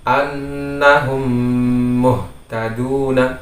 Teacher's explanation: jadi bibir kita tutup dengan sempurna seperti tasydid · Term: idgham mutamatsilain